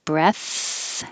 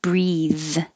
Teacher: 58, the noun, take a deep breath, has a voiceless th at the end, and the vowel is e, as in head, breath. And 59, breathe is the verb, and it has the vowel e as in he.